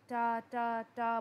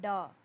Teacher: जब आप डा बोलते हैं तो आपको महसूस होता है कि आपके वोकल कॉर्ड्स में वाइब्रेशन पैदा हुई है, जिसकी वजह से ये वॉइस नॉइस्ड वॉइस है। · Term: वॉइस्ड डेंटल साउंड